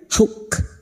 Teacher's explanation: Wal hukma wan, kaf sukun, huruf kaf yang memiliki sifat syiddah dan hamas, maka pada saat disukun bunyinya huk